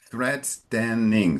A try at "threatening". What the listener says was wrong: Very good. Thank you.